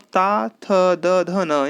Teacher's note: इसी तरह से जब आप ता, थ, द, ध, न यानी त वर्ग का उच्चारण करते हैं, तो ये आपके दंत अर्थात दांतों की सहायता से बोले जाते हैं